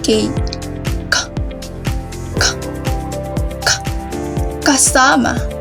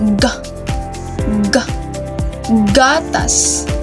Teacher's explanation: Ang ibabaw ng dulong dila ay dumidiit sa velum o malambot na bahagi ngala-ngala. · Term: velar o pangala-ngala